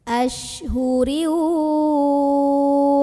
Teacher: karena barisnya di bawah kasrah tanwin maka rohnya tipis pangkal lidah kita tidak perlu dinaikkan